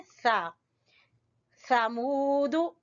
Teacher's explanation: जबान की नोक को सामने वाले ऊपर वाले दो दांतों से लगाएं और फिर बोलें सा। समूद, और मुंह वाव को वाव है मद्दा यहाँ पर, तो मुंह को खींचेंगे वाव मद्दा की वजह से।